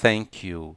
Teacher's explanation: a ponta da minha língua está ultrapassando um pouquinho os meus dentes incisivos superiores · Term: A letra θ